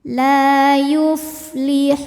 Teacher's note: tajwidnya adalah Mad thobii ziri sebab ada Alif didahului harakat fathah cara bacanya lam panjang dua harakat